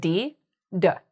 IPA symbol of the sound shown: d